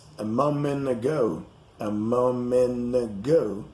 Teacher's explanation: the t in the words moment and lieutenant is not pronounced